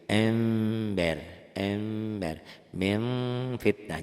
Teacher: jadi bunyi m ada m-nya tapi tetep ada anginnya ya